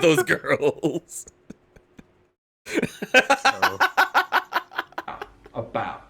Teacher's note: using that vocalized dark L on girls